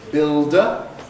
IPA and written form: ˈbɪldə (builder)